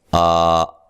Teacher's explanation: اس کو ایک الف کی مقدار کے برابر لمبا کیا جائے گا، ٹھیک ہے، زیادہ لمبا نہیں کریں گے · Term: کھڑی زبر